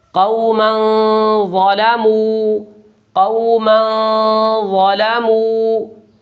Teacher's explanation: اب دیکھیں میم کے اوپر تنوین ہے اور اس کے بعد اخفا کے 15 حروف میں سے وا آیا ہے، لہٰذا نون تنوین کی آواز کو ایک الف کے برابر ناک میں چھپا کر ادا کریں گے